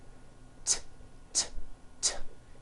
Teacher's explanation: It's unvoiced. Your vocal cords are not vibrating.